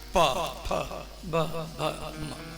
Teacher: ये 5 अक्षर बोलते समय दोनों होठ सटेगा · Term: ओष्ठ वर्ण